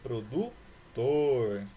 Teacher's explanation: Ou seja, que a última sílaba é a sílaba tônica. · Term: oxítona